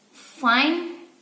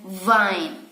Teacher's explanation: the first word begins with a voiceless sound and the second with a voice sound